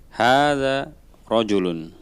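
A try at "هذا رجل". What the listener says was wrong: Naam.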